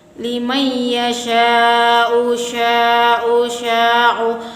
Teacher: Mat artinya panjang, wajib artinya harus, mufasil artinya bersambung. Jadi panjangnya harus 2,5 alif sama dengan 5 harokat, 5 gerakan, 5 ketukan, 5 kata. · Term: mat wajib mutasil